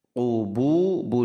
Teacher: Qubu huruf qaf itu tebal sekali pangkal lidah. Qubu dua harakat, tebal, huruf ain harus dijaga dalam tengah tenggorokan.